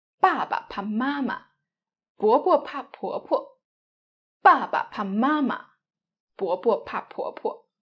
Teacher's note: you differentiate bo and po and pronounce neutral tone light and short.